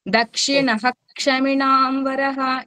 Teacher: క్ష ముందు విసర్గం వస్తే పూర్తిగా హ కింద పలుకుతాము.